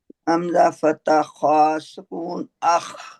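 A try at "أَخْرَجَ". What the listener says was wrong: शाबाश।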